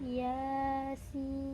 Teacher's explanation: Sinnya dibaca 6 harokat karena termasuk golongan dari sin ini naqasa asalukum.